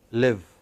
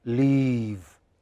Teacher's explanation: some vowels are very short live and the others are very long leave your lips have to spread